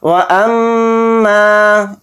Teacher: हमज़ा को मीम में मिला देंगे, मीम को ऊपर तशदीद है तो मीम में गुन्ना करेंगे, मीम के साथ अलिफ मद्दा है तो मीम अलिफ ज़बर मा को थोड़ा खींच कर पढ़ेंगे.